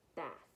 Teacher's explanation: I hear and I notice my tongue touches my teeth.